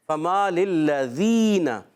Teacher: یا ساکن سے پہلے زیر، فما للذین، تو یہاں پر جو ہے یا مدہ ہو جائے گا، ایک الف کھینچ کر ادا کریں گے